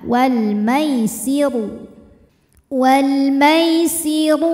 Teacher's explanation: ya sukun didahului harakat fathah maka bacanya lembut atau lunak walmairu huruf Roho dibunyikan secara tafkhim karena berharakat damah maka Roho ditebalkan